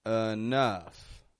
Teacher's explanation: I'm making the E in the beginning into a schwa sound, an sound. And then the OU in the middle are getting an sound as well, but a stronger one, a short U.